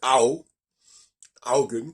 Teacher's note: on a un son AO qui n'est ni le A, ni le O, ni le U.